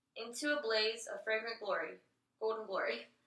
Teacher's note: I didn't hear any glottal fry towards the end of the sentences.